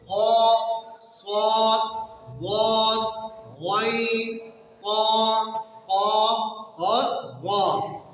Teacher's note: جن حروف میں، یہ جو 7 حروف میں اس میں استعلاء جو پائی جاتی ہے، اس کا مطلب یہ ہے کہ ان حروف کو ادا کرتے وقت زبان کا اکثر حصہ تالو کی طرف اٹھ جاتا ہے، اور جس کی وجہ سے یہ حروف موٹے ہو جاتے ہیں